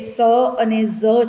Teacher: તો એ સંઘર્ષીઓ પણ છે, એ વર્ત્સ્ય પણ છે